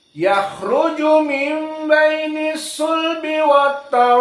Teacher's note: Adapun qiraah seperti biasa hamzah bermasalah dengan hamzah, maka dibaca setelah mad wajib muttasil dalam keadaan al-isba, kemudian dipermudah hamzahnya menjadi wataraib, seakan-akan mendekati ya